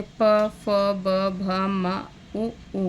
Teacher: ओष्ठ से प, फ, ब, भ, म, उ का उच्चारण होता है